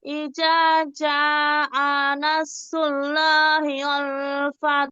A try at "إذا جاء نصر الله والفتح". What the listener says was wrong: খেয়াল করেন শুরুর দিকে ইযা জা, ইযা জাল নরম জিম শক্ত। টান হবে না।